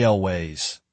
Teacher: Stretch the vowel sound (aaal-ways) to highlight absolute certainty.